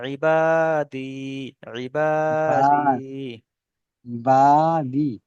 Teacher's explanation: সাকিনের ডান দিকে জের আছে, জেরটি হলো, জেরটা হলো ইয়া মাদ্দা বলে, ইয়া মাদ্দা এক আলিফ টান দিয়ে পড়তে হয়